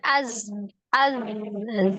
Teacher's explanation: secara makhraj huruf z itu diucapkan itu di antara ya ujung lidahnya ada di antara ujung gigi seri atas dan bawah mendekati ujung gigi seri bagian bawah ya kemudian dia memiliki sifat